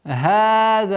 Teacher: Долгота в размере двух огласовок фатха